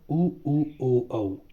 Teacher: वृत्ताकार वो जिसको बोलते समय क्या होता है, मुंह की जो वो स्थिति है वो कैसी हो जाती है, होंठों की आकृति पूरे गोल हो जाते हैं, वृत्त की तरह बन जाते हैं। उनकी संख्या 4 है, उनको वृत्तमुखी बोला जाएगा।